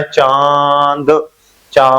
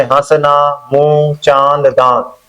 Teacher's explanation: मुंह भी खुला है, नाक भी चल रही है, तो चंद्रबिंदी चलेगी, ठीक है। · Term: अनुनासिक